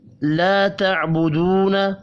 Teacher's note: الف اور واو مدہ ہیں، دونوں کو 1 1 الف کے برابر کھینچ کر پڑھنا ہے